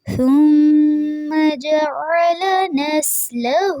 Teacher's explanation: ثم میں جو ثا ہے اس میں سیٹی کی آواز نہیں ہونی چاہیے، میم پہ غنہ ہو رہا ہے.